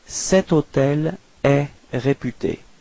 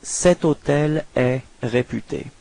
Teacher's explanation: Keep in mind that even if hôtel is starting with H, H is actually not pronounced, so the first sound of the word is O